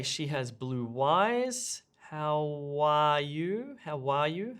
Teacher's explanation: notice how we're adding an additional w sound